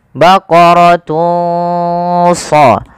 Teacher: Maka teman-teman samarkanlah suara dhammatainnya, suara unnya kepada huruf shad.